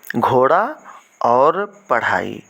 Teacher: देवनागरी लिपि में च वर्ग में द्विगुण ध्वनियाँ आती हैं जिन्हें द्विगुण ध्वनियों को हम उत्क्षिप्त भी कहते हैं और इनके उच्चारण में जीभ पहले ऊपर उठकर मूर्धा तालु को स्पर्श करके झटके के साथ नीचे आती है, उसे द्विगुण ध्वनियाँ कहते हैं।